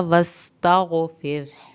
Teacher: फिर रा को पतला पढ़ना है क्योंकि पीछे ज़ेर, पिछला लफ्ज़ के नीचे ज़ेर है।